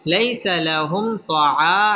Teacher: মিম সাকিনের বামে ত আসছে এটা হচ্ছে ইজহারে খাস এখানে গুন্নাহ ছাড়া পড়তে হবে